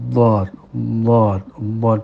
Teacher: Makhrajnya di tepi lidah, bisa tepi kanan, bisa tepi kiri, bisa tepi dua-duanya. Bekerja dengan gigi-gigi geraham yang ada di atasnya, dengan cara gigi itu bertemu dengan tepi lidah satu persatu, tidak spontan langsung 3 plek, tapi 1, 2, 3 gitu ya.